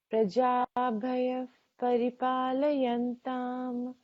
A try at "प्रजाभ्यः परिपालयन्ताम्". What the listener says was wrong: It is not bhaya, it is bhya. Bha is half, नहीं तो भया हो जाएगा. प्रजाभ्यः परिपालयन्ताम्.